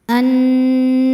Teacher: Lam yang sukun tidak dibaca, masuk ke lam kedua atau dinamakan dengan idgham syamsi.